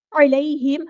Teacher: میم ساکن پر اظہار شفوی ہو رہا ہے